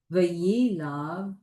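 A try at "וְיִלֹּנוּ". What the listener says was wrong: V'yilavu. That's a vav. A vav and an u.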